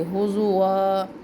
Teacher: حضوا حضوا میں یہاں پر بھی وقفے مطلق ہے تو تنوین میں سے ہم ایک زبر کو ہٹا دیں گے اور اس کو ہم مد اصلی کے ساتھ ادا کریں گے